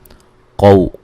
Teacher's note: قاف کو موٹا ادا کریں گے، واو لین ہے